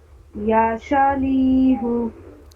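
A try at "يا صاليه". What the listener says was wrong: غلط. صا. شا نہیں، آپ سا ہی اس کو بولیے. سا بولتے بولتے پھر دھیرے دھیرے اس کو ہم لوگ صحیح کریں گے. سا اور سا دونوں کا تلفظ الگ الگ ہے. چلیے یا سا.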